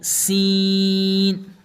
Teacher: اس سین کے اندر سیٹی کی آواز نکالیں گے